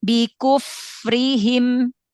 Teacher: Ayo jangan diayun, jangan dipanjangkan kunya.